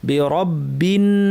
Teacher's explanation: আউযু কুল আউযু বিরব্বি র ভারী, বিরব্বিন নুনের উপর তাসদীদ লম্বা গুন্না